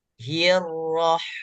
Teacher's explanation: Hi tipis kemudian ro tebal